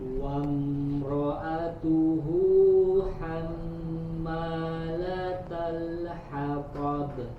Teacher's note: Nah, di sini huruf mim bertasydid, ada gunnahnya, ditahan dulu.